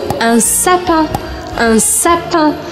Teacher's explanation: Lembrando que o IN em francês eu não falo IN, mas un. Eu abro um sorriso, mas eu só faço o som anasalado sem marcar o I.